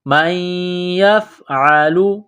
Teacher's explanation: ہے، جَزَاءُ مَن يَفْعَلُ، میم کو یا کے ساتھ ملانا ہے، نون ساکن کے بعد یا ہے، مشدد ہے تو یا میں سختی کرنی ہے